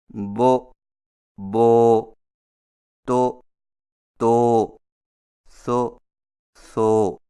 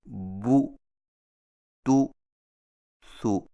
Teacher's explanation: عربی زبان میں چونکہ پیش کی مجہول آواز نہیں ہوتی، اس لیے پیش کی مجہول ادائیگی سے قرآن مجید کی عربیت میں خرابی لازم آتی ہے، اور اس سے بچنے کا طریقہ یہ ہے کہ ہونٹوں کو ذرا آگے کو بڑھاتے ہوئے مضبوطی سے گول کر کے پیش کو دبی ہوئی آواز سے ادا کیا جائے